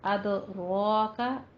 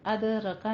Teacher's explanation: رو کو پر پڑھتے ہوئے 2 حرکتوں برابر لمبا کرنا ہے